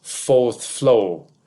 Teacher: working class speech was more likely to omit R in words like fourth flow, and middle class speech was more likely to pronounce the R in fourth floor.